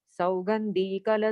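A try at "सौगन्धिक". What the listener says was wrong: सौगंधिक, not धीक।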